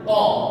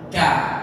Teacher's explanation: pangkal lidah ketemu dengan langit paling belakang di bagian lunak ini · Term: huruf qa